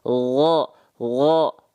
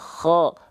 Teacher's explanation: bedanya kalau goin nggak keluar nafas dia. Ngalir tapi suaranya. Kalau kho kasih bocor nafas. Kho. Melafalkannya sama persis.